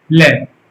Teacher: श्वास वायु मसूड़ों से होकर जीभ के पास से होकर गुजर जाती है, उसे पार्श्विक कहते हैं